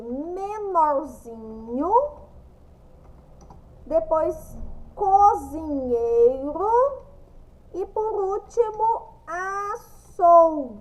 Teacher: E essas três palavras são paroxítonas por quê Porque a penúltima sílaba é a mais forte